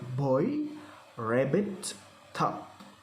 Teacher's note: b okay b we can found on word boy rabbit top this is made with vocal folds vibrating with the lips closed temporarily open as the air comes out comes out with the lungs